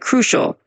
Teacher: when you say the word crucial, just emphasize that first part a bit like crucial.